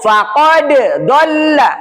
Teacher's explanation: Jangan langsung digabungkan bukan faqadd tapi dipisah dulu qalqalahnya dulu.